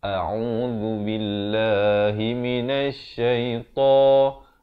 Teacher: hamzah makhraj di pangkal kerongkong, ain di tengahan kerongkong, zal di hujung lidah